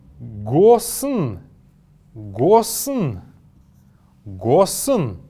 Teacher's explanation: Между буквой «с» и «н» есть небольшой неясный звук.